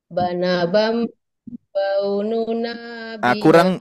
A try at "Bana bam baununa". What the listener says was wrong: Kurang dengung Bu, kurang dengung.